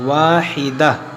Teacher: کان الناس امۃ واحدہ، یہاں پر بھی یہ قف بنا ہوا، یہاں بھی رکا جاتا ہے۔ جب ہم یہاں پر رکیں گے تو اس گولتا کو ہا ساکنہ بنا دیں گے